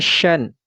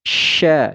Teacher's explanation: fathah tanwin ini tidak lagi dibaca Syan tapi dibaca Sya dipanjangkan dua harakat karena dia berada di akhir ayat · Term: Mad iwad